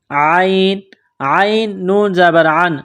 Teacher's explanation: عین گلے کے درمیان سے زور لگا کر عین کو نکالیں گے، پڑھیں گے، عین، عین نون زبر عن، عین کو نون کے ساتھ ملانا ہے، نون ساکن ہے، نون ساکن کے بعد دوسری نون ہے جو مشدد ہے۔